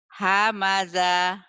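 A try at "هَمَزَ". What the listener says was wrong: Hamaza, tapi pendek ya Bu ya. Hamaza kayak orang judes ya Bu ya, kayak orang marah, kayak orang kesel gitu loh. Ditanya mau kemana kesel. Hamaza.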